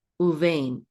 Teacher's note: we've pronounced the bet as a vet instead.